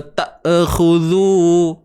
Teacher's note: Jangan beranakkan bunyi dia lah. Huruf hamzah ni bersifat syiddah, suara yang tertahan. Okey, jangan lepaskan dia.